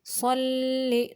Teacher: स्वाद मोटा करेंगे, लाम को बारीक पढ़ेंगे